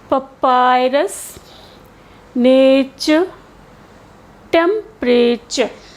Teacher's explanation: the U that comes in the unstressed syllable, that is voiced as a schwa sound of U.